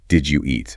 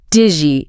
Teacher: Or think about something simple like, did you eat? Right. In fast speech, that often becomes digi.